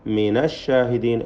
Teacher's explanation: മിനഷാഹിദീൻ എന്ന് ഫത്ഹാണ് അവിടെ നൂനിന് വരുന്നത് മറിച്ച് മിനി ഷാഹിദീൻ എന്ന കസർ നൽകുകയില്ല